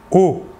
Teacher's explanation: Alors que pour le O, qui n'est pas nasal, vous ne sentirez pas d'air passer sur votre doigt. O. L'air sortira entièrement par la bouche.